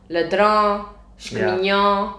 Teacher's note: Por exemplo, o ão a gente às vezes diz muito como ã